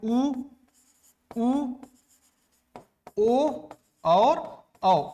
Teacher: ऐसे स्वर जिनके उच्चारण में मुख गोलाकार हो जाए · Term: वृत्तमुखी स्वर